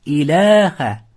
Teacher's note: Mattabiy degani ikki harakat cho'ziladi · Alif so'zda kelib, o'zida hech qanday belgi bo'lmasdan, undan oldingisi fathalik bo'lsa, mattabi'i bo'ladi. Mattabi'i degani 2 harakat cho'ziladi.